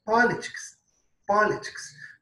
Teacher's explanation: A tônica, que é a mais forte, está no pó, politics. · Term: sílaba tônica